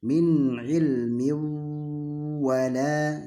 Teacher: Di situ ada tanwin. Seolah-olah tanwinnya hilang, kita hilangkan, langsung kita ke huruf waw. Jadi seolah-olah di waw ada tasdid, maka didengungkan. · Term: idgham